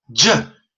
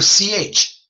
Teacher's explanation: A J is a voiced CH.